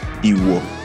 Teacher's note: Meaning poison, uses mid-tone on both vowels